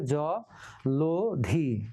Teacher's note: ল অ, এই অটা এখন ও হয়ে যাবে, ওতে ওকার হয়ে গেল। এই জন্য এই যে ওকার, জ ল ধি নয়, জলধি। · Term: মধ্য অ